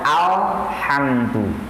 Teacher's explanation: membacakan kalimat atau huruf alif lam qamariyah ini harus jelas suara lamnya. Seperti kita biasakan baca alhamdu, maka jelas suara lam matinya al. · Seperti kita biasakan baca alhamdu, maka jelas suara lam matinya al. Terkadang kita mendengar ada di antara yang baca belum sesuai dengan yang dikatakan alif lam qamariyah tadi, di mana sang pembaca baca dengan baca al, ya.